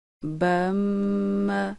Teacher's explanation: شد والی میم پر غنہ کرنے کا طریقہ۔ میم شد کے غنہ میں ہونٹوں کے اندرونی خشک حصے ہلکے سے دباؤ کے ساتھ ملا کر آواز کو ناک کی جڑ سے